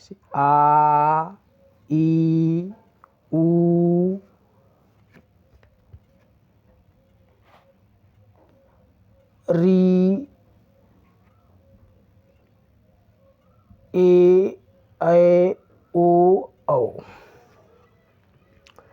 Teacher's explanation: दो मात्रा का समय लगता है उन्हें हम दीर्घ स्वर कहते हैं